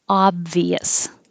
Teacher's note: It looks like an O, but it sounds like ah. Obvious. So it's stress on the first syllable.